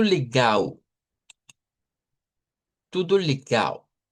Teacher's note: todo lo que termina en o suena a u y todo lo que termina en l suena a u. Vean, pero la diferencia entre las us en la o que se convierte en u es que se hace u larga.